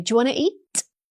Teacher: They're linking everything together into one fluid sound.